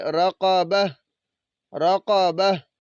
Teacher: جب ہم وقف کریں گے تو اس تا کو ہم نے ساکن کر دینا ہے، یہ ہا بن جائے گی